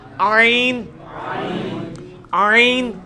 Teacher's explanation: ہا کا مخرج جو ہے نا یعنی وسط حلق، ادھر ہی سے یہ آئین بھی نکلنا ہے